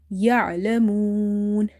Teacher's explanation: Remember to pronounce the ain from the middle of the throat. If you say ya'lamun, then it will replace itself with a hamza, and you can fall into lahne khafi, lahne jali, the clear mistakes which can change the meaning of Quranic words.